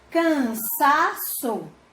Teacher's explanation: Então, sa é a sílaba mais forte. Ela também não é a última, ela é a penúltima.